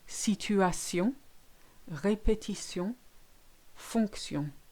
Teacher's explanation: Now the T in T-I-O-N words is always se. So the T-I-O-N ending is sion. It's never shun, as in English, and that's quite hard for English speakers to do.